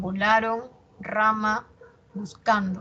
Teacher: El acento en la penúltima sílaba. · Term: palabra grave